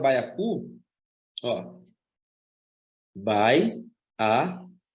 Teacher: O A é vogal, o I é semivogal. Então, eu já tenho de cara aqui um ditongo decrescente.